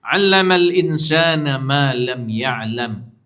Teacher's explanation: dia nun mati bertemu dengan huruf ikhfa sin ha dia tak bunyi nun betul